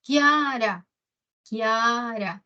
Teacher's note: Ahí la I y la A no se separan. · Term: diptongo